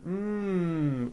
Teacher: the m sound m which is a voiced consonant so because of that when you add an S the S